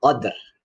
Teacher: harus ada ro-nya, terdengar sedikit huruf ro-nya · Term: dibaca waqaf